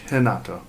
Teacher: Portuguese and Brazil, the R sounds like an H.